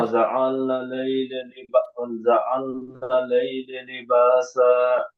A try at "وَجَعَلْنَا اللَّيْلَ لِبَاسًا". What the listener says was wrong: এখানে লামের উপরে তাসদিদ আছে